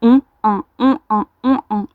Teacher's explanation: Faites-le rapidement et vous verrez que le passage de on à en, eh bien, ça ouvre les lèvres.